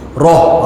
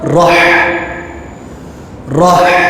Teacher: Roh, itu ha yang duduk di pangkal kerongkong. Tetapi ha yang ini dia duduk di tengah kerongkong, maka bunyinya rah.